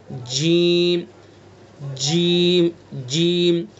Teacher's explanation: जीम का मखरज ज़बान का बीच और उसके मुकाबिल ऊपर का तालु। ज़बान का जो बीच वाला हिस्सा है, उस बीच के हिस्से को बिल्कुल उसके ऊपर लगाएंगे, वहाँ से जीम अदा हो जाएगा।